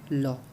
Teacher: ल जो है पार्श्विक व्यंजन, जिसके उच्चारण में हवा जीभ के पार्श्व अर्थात बगल से निकल जाए